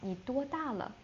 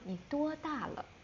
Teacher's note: Like ni the third one, duo the first tone, da the fourth one, la natural.